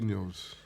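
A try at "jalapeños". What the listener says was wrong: the J silent, The J silent. It's hala. Hala.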